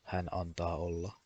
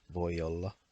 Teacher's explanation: For example, when you say hän antaa olla or voi olla, those sentences, they don't use the glottal stop. In fact, they almost sound like they are one word.